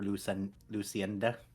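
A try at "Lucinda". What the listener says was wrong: Yes, the E is silent.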